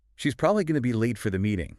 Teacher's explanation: the crucial information, probably, late, meeting, is carried clearly by the stressed words